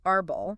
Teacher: the stress is definitely on the first syllable